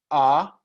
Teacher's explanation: al abrir la boca la lengua se mueve un poquito para atrás entonces igual es un poco más hacia atrás pero siguió contando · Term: la vocal a